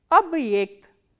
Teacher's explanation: this ye is pronounced as the combination of these two sounds, e kratke and a.